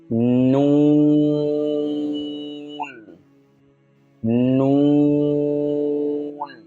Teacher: জিহ্বার অগ্রভাগ স্বাভাবিকভাবে তালুতে উঠালে যেখানে লাগে ঠিক ওই জায়গা থেকে উচ্চারণটা হবে। এইভাবে স্বাভাবিকভাবে আপনি আপনার তালুতে জিহ্বার অগ্রভাগ লাগিয়ে দেন, যেখানে লাগে ঠিক ওই জায়গা থেকেই।